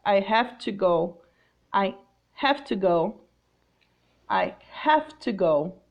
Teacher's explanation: it's not the sound of Z it's the sound of F I have to go I have to go I have to